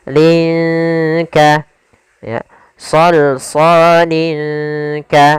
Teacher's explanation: Cara membacanya samarkan lin ya ke huruf kaf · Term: ikhfa